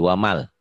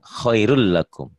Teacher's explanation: Kayak ini waman, ketemu lam jadi wamal. Melebur, bunyi N-nya hilang. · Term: idgham